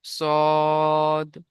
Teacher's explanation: পুরো অক্ষর মুখটা গোল হয়ে যাবে, তিন আলিফ টান হবে